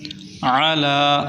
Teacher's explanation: عین کو حلق سے نکالیں، وسط حلق سے